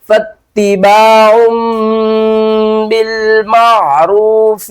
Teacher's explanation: تنوین کے بعد آگے بار ہے، تو ہم کیا کریں گے؟ تنوین کی آواز کو میم کی آواز میں بدل کر پڑھیں گے